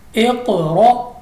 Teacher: क़ाफ़ हमारे पास कलकला है, हमने गूंजती हुई आवाज़ के साथ पढ़ा है